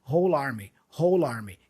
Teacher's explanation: So we naturally join the L with the A for army, whole army. He doesn't do it so clearly here in this clip because he's kind of shouting, but in natural speech, that's what you would do, okay?